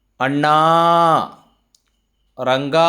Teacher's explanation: ಈ 2 ಪದಗಳನ್ನು ಉಚ್ಚಾರ ಮಾಡುವಾಗ ಕಡೆಯ ಸ್ವರವನ್ನು 2 ಮಾತ್ರೆಗೂ ಹೆಚ್ಚಾಗಿ ಎಳೆಯಲಾಗಿತ್ತು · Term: ಪ್ಲುತ